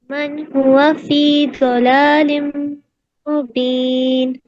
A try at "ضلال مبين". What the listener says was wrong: ضلال میں ضاد کو آپ تھوڑا اور پر کریں گے، اور موٹا کریے، ضلال مبین. تو ضاد پہ آپ کو پریکٹس کرنا ہے انشاءاللہ.